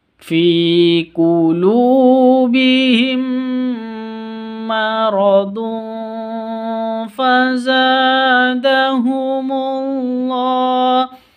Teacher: tanwin bertemu dengan Fa cara bacanya samar didengungkan karena bacaan Ikhfa Hakiki